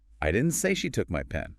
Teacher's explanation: First stress on I. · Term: primary stress